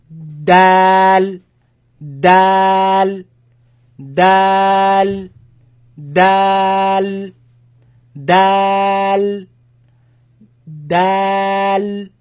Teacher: Ta, just like that, but this one you're going to press a little harder, and this sound does not exist in the English language, maybe in the word that, so it's behind the upper teeth, so dal, dal, behind the upper teeth